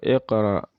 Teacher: Bukan iqra, tapi iqra, memantul ya. Nah, ini adalah qalqalah sugro, qalqalah kecil, pantulannya kecil